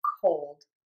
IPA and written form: koʊld (COLD)